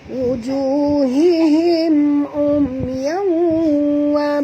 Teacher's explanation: tanwin bertemu dengan waw, masukkan bunyi tanwin ke dalam waw disertai dengung, dua harakat, idgham ma'al gunah.